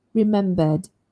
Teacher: remember a vowel is a voiced sound. So the ending must be the voiced d,